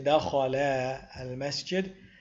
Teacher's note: we don't pronounce the alif because it is eradicated when you join the word al-masjid.